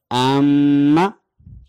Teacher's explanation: यहां पर गुन्ना होगा, आवाज थोड़ी सी नाक में जाएगी